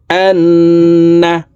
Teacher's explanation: তো এখানে নুনের উপরে তাসদিদ আছে, এই কারণে এই হামজা তাসদিদওয়ালা নুনের সাথে নাকের বাসি থেকে গুন্নাহ করে পড়ব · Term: ওয়াজিব গুন্নাহ